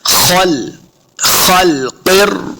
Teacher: फी खल्क़िर, खल्क़िर, ख और क़ाफ दोनों को मोटा पढ़ना है, दोनों हुरूफ़ मुस्तअलिया से हैं। खल, देखिए ख को मोटा करते हुए कहीं हमने लाम को नहीं मोटा करना। खल, खल्क़िर, क़ाफ को रा के साथ मिलाना है, रा मुशद्दद है।